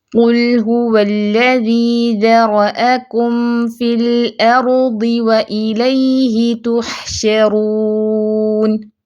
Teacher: کم کے لیے ہونٹ پہلے ملائیں گے نرمی سے، پھر فی کے لیے اس کے مخرج پہ جائیں گے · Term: میم ساکن